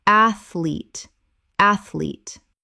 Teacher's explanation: 2 syllables only. The middle syllable does not exist.